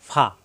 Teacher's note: ফা এর মাখরাজ উপরে দুই দাঁতের আগা নিচের ঠোঁটের পেট দুই ঠোঁট একত্র হবে না